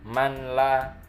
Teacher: nun mati bertemu dengan la itu idgham bila gunnah